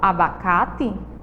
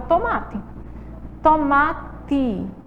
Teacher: Quando eu falo abacate, eu escrevo abacate com E, mas quando eu falo abacate, sai o sonzinho da letrinha I